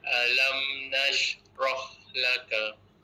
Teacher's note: Roh angin kuat sikit.